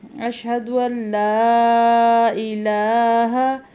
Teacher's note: لام کے اوپر مد ہے، اس کو لمبا کافی کرنا ہے